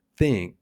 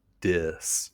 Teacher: Russian doesn't have these sounds either, so think becomes sink and this becomes dis.